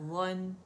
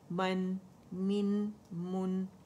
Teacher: اچھا غا موٹا ہے لیکن نون باریک ہے